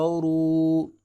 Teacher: را کے اوپر پیش ہے لہٰذا اس کو پر کر کے پڑھیں گے